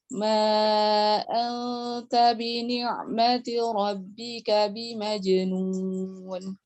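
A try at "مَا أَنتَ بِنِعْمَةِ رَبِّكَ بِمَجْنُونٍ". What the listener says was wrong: Taknya jangan tak nun sukun ketemu tak jangan terlalu diangkat lidahnya. Ma anta bi ni'mati rabbika bimajnun. Anta jangan anta. Anta.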